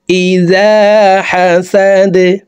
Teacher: حسا دال زبر ده دال के ওয়াকফের ক্ষেত্রে সাকিন করে ফেলবো দাল যেহেতু কলকলার হরফ নিচের দিকে ধাবিত করে ধাক্কা দিয়ে সাকিন করতে হবে